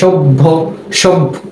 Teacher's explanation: দন্ত স ভ জফলা, এর উচ্চারণ হয় সভ্য, কেমন? তাহলে জফলা থাকার কারণে ভয়ের উচ্চারণটা দুইবার হলো। কেন হলো? কেননা জফলাটা রয়েছে সভ্য শব্দটির শেষে, আর যখন কোনো শব্দের শেষে জফলা থাকবে তখনই সেটা দুইবার উচ্চারণ হবে এবং শেষেরটির সাথে ওকার যোগে উচ্চারিত হবে।